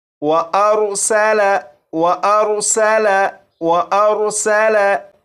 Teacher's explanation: और इस लफ्ज़ में सीन है, सीन को सीटी की आवाज़ के साथ पढ़ेंगे